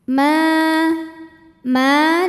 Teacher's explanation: Thobi'i zahiri sebab ada Alif yang didahului huruf berharakat fathah maka cara bacanya dipanjangkan mimnya dua harakat saja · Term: Mad Thobi'i zahiri